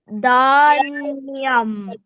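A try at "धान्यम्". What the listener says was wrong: Dhanyam. Right? Fantastic.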